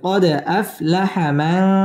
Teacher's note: গুন্না করে পড়তে হবে নুন সাকিনের বামে তা আসছে তা ইকফার হরফ · দাল কলকলার হরফ এখানে ধাক্কা দিয়ে পড়তে হবে কলকলা করে পড়তে হবে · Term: ইকফা গুন্না